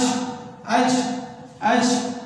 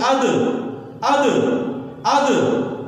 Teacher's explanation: اس پہ جب جزم آ جائے دوسرے حرف سے ملا کے پڑھتے ہیں تو اس کی آواز ریپیٹ ہوتی ہے، لوٹتی ہے، ایکو جیسے پڑھتی ہے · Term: حروف قلقلہ